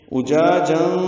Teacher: جا کو 2 حرکات لمبا کرنا ہے ، اخفا میں دو حرکات آواز کو چھپانا ہے، اجاجا فلولا، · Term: الف مدہ